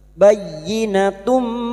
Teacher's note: Jumat tanwin bertemu mim idgham bigunah. Masuk dengan mendengung.